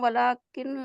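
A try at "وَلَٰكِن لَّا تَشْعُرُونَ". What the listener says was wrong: वला किल्ला, डायरेक्ट नून गायब बीच में से। वला किल्ला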